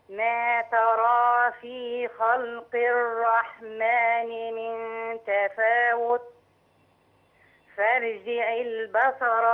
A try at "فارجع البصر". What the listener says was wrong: فخم فارجع. نفخم الراء ثر مش فر ثرجع.